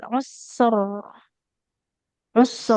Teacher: kalau berhenti di situ ee huruf rnya jadi tebal